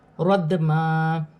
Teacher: یا ساکن سے پہلے زبر یالین بنے گی، اسے کھینچا نہیں جائے گا. ردما، دال ساکن ہے، حرف قلقلہ میں سے ہے، قلقلے کے ساتھ ادا کیا جائے گا